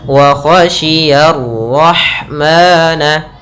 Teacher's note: Kemudian lafal ya ketemu dengan ra yang berharakat tasydid dan berharakat fathah. Ra-nya tebal, ya-nya tipis.